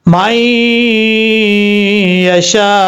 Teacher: یہاں پر غنہ کریں گے ایک الف کی مقدار